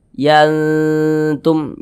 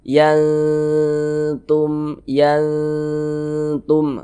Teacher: Bunyi nun sukunnya dibaca samar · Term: ikhfa hakiki